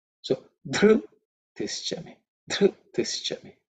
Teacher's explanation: In terms of pronunciation, the first letter you have to pay attention to because it is the fourth letter in the tha varga. Okay, dhr, just the way dha. Okay, dharta, dhr. So it has to be aspirated